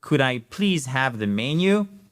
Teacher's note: vous faites l'intonation qui remonte à la fin, car c'est une question fermée à laquelle on peut répondre par oui ou par non simplement.